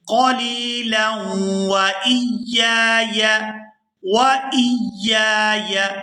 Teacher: قلیلا وَإِيَّايَ، وَإِيَّايَ، یہاں پہلی جو یا ہے اس کے ساتھ الف ہے اور یہ الف مدہ ہے تو اس کو کھینچ کر ادا کریں گے